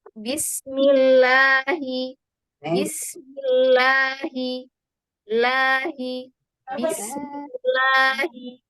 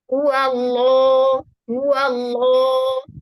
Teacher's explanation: Ketika lam ditebalkan, itu seperti ada gema di dalam mulut. Di dalam rongga mulut itu ada gema yang membentuk langit-langit. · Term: lam yang tebal